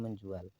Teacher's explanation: Contoh afiksme yang dibubuhi pada kata jual akan menjadi menjual. Bunyi sengau fonem N muncul padahal sebelumnya tidak ada.